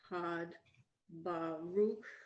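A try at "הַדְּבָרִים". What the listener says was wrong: No, the vowel on the resh.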